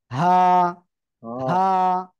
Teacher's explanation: হলক বা গলার শুরু থেকে